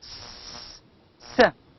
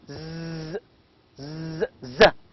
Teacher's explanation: S is an alveolar fricative voiceless sound, while Z is an alveolar fricative, but here it's a voiced sound.